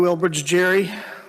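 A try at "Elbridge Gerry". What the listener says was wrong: I know him very well because that's not even how you pronounce his name. It's a hard G. It's pronounced.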